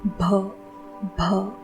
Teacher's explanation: अगर हम ब इस वर्ण का महाप्राण उच्चारित करते हैं तो यह भ बन जाता है। ब यह अल्प प्राण वर्ण है।